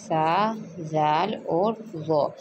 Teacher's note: जब ज़बान की नोक ऊपर के दोनों दांतों के सिरों से टकराती है तो वहाँ से ये 3 हरूफ अदा होते हैं, सा ज़ाल और ज़ो।